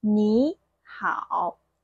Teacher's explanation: But there's one rule for two third tones combined together. We're going to make the first third tone character second tone. For example, hello, that's 你好, both third tone, right?